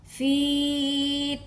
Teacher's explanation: فی، اب فی کے ساتھ یائے لین نہیں ہے بلکہ یائے مدہ ہے، کیونکہ یا سے پہلے زیر ہے۔ فی کو ہم 2 کاؤنٹ کھینچ کے ادا کریں گے